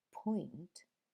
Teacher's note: the complete closure produced by the lips when we say the first sound in the word point we